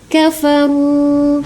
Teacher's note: Kafaru sama dommah bertemu dengan sukun pada wau ya. Damma bertemu dengan wau sukun itu disebut dengan mad thobi'i atau mad asli. Panjangnya dua harakat.